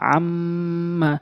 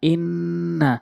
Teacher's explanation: দুই সেকেন্ড পরিমাণ নাকের ভিতরে নিয়ে আওয়াজ করা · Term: ওয়াজিব গুন্না